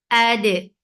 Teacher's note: For fatha open jaws attach with dal. Dal will get sifa of qalqala and keep dal light.